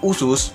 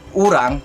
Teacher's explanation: vokal belakang tinggi bundar. Untuk lebih dipersempit, bibir lebih didorong ke depan. Vokal U ini dalam bahasa Indonesia contohnya seperti kata usus dalam bahasa Indonesia, kemudian kata urang dalam bahasa Banjar. · Vokal U, vokal belakang tinggi bundar. Untuk lebih dipersempit, bibir lebih didorong ke depan.